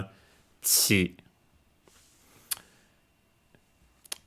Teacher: in Japanese is actually slightly different because it's further back in the mouth